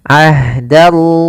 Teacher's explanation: Kemudian ahdallahi, di sini ada ha sukun yang mana ha memiliki sifat yaitu jarayan wa an-nafas, mengalirnya nafas kita